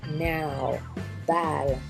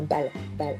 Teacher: Now produit un son voyelle A long comme le A de balle